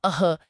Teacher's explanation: कंठ से आने वाला अह यानी विसर्ग